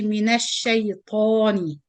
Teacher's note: ta is the tafkheem sound, means you pronounce the ta with full mouth.